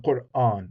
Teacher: So if sometimes in English people just say Quran, right? But in Arabic it's 2 syllables, Qur, and then the second syllable begins with the hamza